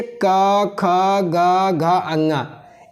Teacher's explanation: इनका उच्चारण कंठ से होता है और इनका नाम जो दिया गया है, इनको बोला जाता है कंठवर्ण।